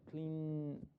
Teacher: Y clean termina en voice sound. Clean. Sí lo puedo alargar y puedo sentir la vibración.